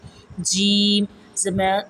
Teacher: زبان کا درمیان جب بالمقابل اوپر کے تالو سے لگے اس سے جیم ادا ہوتا ہے